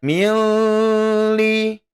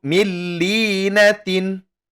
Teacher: nun sukun bertemu dengan la, maka dia bukan bagian dari idgham bi gunnah, tidak didengungkan ya, bukan didengungkan tapi dia tidak didengungkan, yakni idgham bila gunnah, tidak ditahan selama 2 harokat, menjadi dia la-nya la tasydid biasa ya.